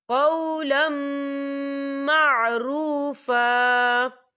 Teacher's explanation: تو یہاں پر ادغام ہوگا غننے کے ساتھ